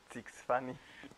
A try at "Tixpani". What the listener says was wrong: Pero es con T, amigo, al principio. Tienes que pronunciar la T más así.